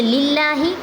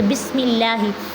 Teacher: لفظ اللہ اور اللہم کے لام سے پہلے اگر زیر آ جائے تو اسے باریک پڑھیں گے، زیر خواہ اسی کلمے میں ہو جیسے للہ، یا اس سے پہلے کلمہ کے آخر میں ہو جیسے بسم اللہ۔